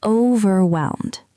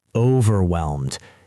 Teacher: Stress the first syllable a little bit.